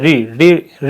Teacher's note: री को बोलने में क्या होता है, जीवा जो है थोड़ी मोड़नी या घुमानी पड़ती है